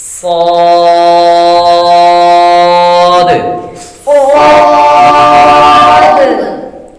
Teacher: تو دونوں کام کریں گے، اس میں ہم سیٹی کی آواز بھی نکالیں گے اور اس کو موٹا بھی پڑھیں گے